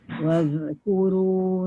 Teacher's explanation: Jangan waz. Hujung lidah keluarkan.